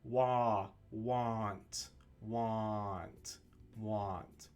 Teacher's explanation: So, the most important thing to remember about the differences between these two words and these two sounds is the initial vowel sound, the vowel sound that comes first. In the word want, it's the ah sound, same as the ah sound in Japanese.